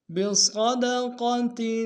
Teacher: را کو موٹا ادا کریں گے۔ الا من امر بصدقۃ، صاد کو موٹا ادا کریں گے، قاف کو موٹا ادا کریں گے